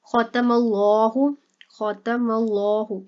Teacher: یہاں پر دیکھیں اللہ جو ہے اس سے پیچھے زبر ہے اس لیے اس کو موٹا کر کے پڑھا جائے گا، اور یہاں پر لام کے اوپر جو ہے وہ کھڑا زبر ہے لمبا کیا جائے گا، اور ہا جو ہے اس کو لمبا نہیں کریں گے کیونکہ اس کے اوپر کوئی بھی کھڑا زبر یا مدہ نہیں ہے اس لیے اس کو تیزی سے پڑھیں گے.